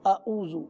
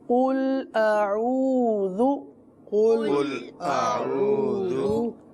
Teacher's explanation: عین کو نرم وسط حلق سے ادا کریں گے